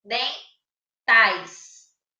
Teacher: O DEM, como tem um M, ele sai um som nasal. E o tais sai normal